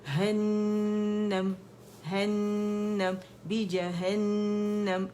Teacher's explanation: جیم پہ بھی جبڑا کھلے گا، ہے پہ بھی کھلے گا، پھر نون مشدد آ گیا، ہر غنہ مشدد اکمل گریڈ کا غنہ کریں گے، اور یہ 2 کاؤنٹ کا کہلاتا ہے ، 2.5-3 تک اس کی آواز چلی جاتی، ہنم ہنم بی